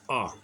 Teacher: आ बोलने के लिए जीभ का मध्य भाग प्रभावित होता है। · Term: मध्य स्वर